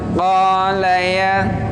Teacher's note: Tapi di la-nya harus pendek. Harus pindah cepat ke ya-nya. Qala ya. Dia panjangnya bisa sampai 5 harokat karena dia mad jaiz munfasil.